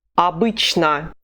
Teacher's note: The two letters o are not stressed, so they are weak, and we say ah when we see them.